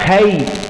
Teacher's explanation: Lakin huna ya sukun sebelumnya fathah, maka kai, maka dibaca dengan lunak. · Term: madlin